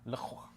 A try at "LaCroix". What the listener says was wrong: I don't even know how you got to that accent because you didn't even pronounce the X. I would have expected LaCroix.